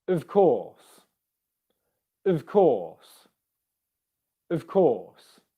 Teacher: correct well done it is a v dev so of it's the schwa sound here plus the v because when we're saying of course we're using the weak form